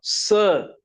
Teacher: There is no voice in that. Sound is there. Hissing sound is there but voice is not there. Voice means your vocal cords must vibrate then only we call it a voiced sound. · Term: voiceless sound